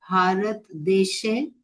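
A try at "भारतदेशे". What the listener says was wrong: Bharata Deshe. Drop the Halant business from Hindi, okay? Very critical.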